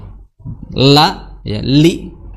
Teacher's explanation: Li, ya, makhrajnya tadi sudah kita singgung, li di ujung lidah, ya, dari pinggir, ya, sampai ujung, ya, bertemu dengan gusi gigi seri atas